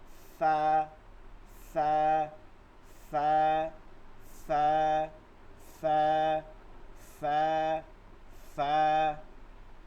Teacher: একটা বাতাস বের হয়ে যাবে দাঁতের ফাঁক থেকে।